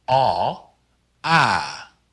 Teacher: the long a is pronounced ah not like the short ah but open your mouth a little wider to get the ah sound